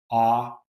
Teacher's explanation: low back vowel, unrounded